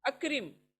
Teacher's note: छोटा काफ, अक करके हलक में मत जाओ